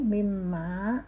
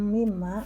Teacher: Hum, mimma mendengung. Mimma mendengung dan panjang 2 harokat.